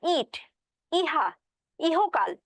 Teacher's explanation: ই বলার সময় কিন্তু অবশ্যই জিভের সামনের অংশটা একটু উপরের দিকে উঠতেছে, তাই না? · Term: সম্মুখ উচ্চ